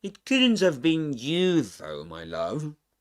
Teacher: And he stressed he stresses the word you.